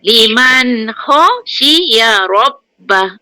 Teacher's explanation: Nun mati jumpa kha, izhar haqi. Jangan dengung.